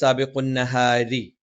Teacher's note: റ സാബിഖുൻ നഹാരി രി എന്ന് പറയുന്നത് നാവിന്റെ തലയുടെ മുതുക് മേലെ മുൻപല്ലിന്റെ മോണയിലാണ്. നാവിന്റെ മധ്യഭാഗം താഴ്ന്നു നിന്നുകൊണ്ട് അല്പം നേർപ്പിച്ച ഉച്ചാരണമാണ് നഹാരി.